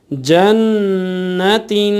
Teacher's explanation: بہرحال، جیم نون زبر جن، نون زبر ن، جن، تا دو زیر تین، جنتین، اب جب یہاں ہم وقف کریں گے تو نون پر تشدید یعنی سختی بھی زیادہ رہے گی آخر میں وقف کی صورت میں، اور غنہ بھی تھوڑا یہاں زیادہ ہوگا